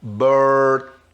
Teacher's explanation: Não tem esse som quando a gente pronuncia o R em inglês americano. Então é Robert e aquele T de nada, bem curtinho